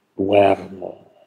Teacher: In der betonten Silbe heißt es duermo, also das O diphthongiert zu UE. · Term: Diphthongierung